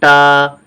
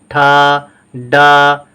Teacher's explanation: जब बोलते हैं हम लोग, जुबान ऊपर जाकर हल्की सी मुड़ती है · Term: मूर्धन्य